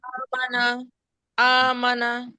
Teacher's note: এখানে কিন্তু কিছু হরকত আছে কিছু মাদও আছে, যেরকম আমানা শব্দটার মধ্যে আটা হলে শুধু মাদ, কিন্তু মিম এবং নুন এখানে হরকত তাড়াতাড়ি পড়তে হবে, সুতরাং আমানা বলা যাবে না, মিম নুনকে টানা যাবে না।